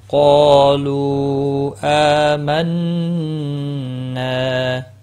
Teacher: مد منفصل ہے، تین الف کے برابر کھینچ کر پڑھنا ہے